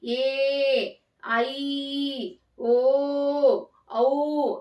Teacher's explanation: ನೀಟಾಗಿ ನೋಡ್ಕೋಬೇಕು ಇಲ್ಲಿ ಆಪ್ಷನ್ ಎ ನೋಡಿ ಎ ಐ ಓ ಔ ಇವೆಲ್ಲ ಎರಡು ಮಾತ್ರ ಕಾಲದಲ್ಲಿ ಉಚ್ಚಾರ ಮಾಡ್ತಕ್ಕಂತಹ ಅಕ್ಷರಗಳು ಹಾಗಾಗಿ ಇದು ದೀರ್ಘ ಸ್ವರಗಳಾಗುತ್ತೆ